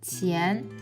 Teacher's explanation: And this character's finals are yan. And its tone is rising tone.